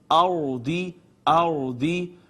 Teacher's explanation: فِي الْأَرْضِ ناظرین یہ را ہے، را ساکن ہے، اس سے پہلے زبر آئی ہے، را کے اپنے اوپر زبریہ پیش ہو یا خود ساکن ہے تو ما قبل پہ زبریہ پیش ہو، دونوں صورتوں میں را کو پر کر کے پڑھتے ہیں